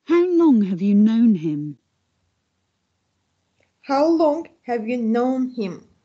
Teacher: Long and known are stressed. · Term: sentence stress